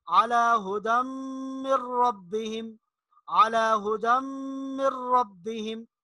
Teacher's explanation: ادغام کے بارے میں آپ کو یہ بتایا کہ اگر نون ساکن یا تنوین کے بعد حروف یرملون میں سے کوئی حرف آ جائے تو وہاں ادغام ہوگا، یعنی پچھلے حرف کو اگلے حرف کے ساتھ ملا کر پڑھیں گے، درمیان میں نون یا تنوین جو ہے اس کو نہیں پڑھا جائے گا · ہدم پہ غنہ ہوگا، من ربہم پہ غنہ نہیں ہوگا